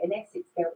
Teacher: that vocalized dark L on girls